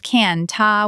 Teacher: can't becomes can-ta with an extra vowel. That extra vowel can make the word sound like cannot in a strange way.